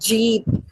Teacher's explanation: For example, the word cheap begins with the voiceless affricate cha, and the word jeep begins with the voiced affricate ja